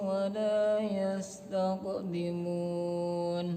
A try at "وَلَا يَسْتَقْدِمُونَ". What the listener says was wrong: Qafnya bagusin. Pantulkan.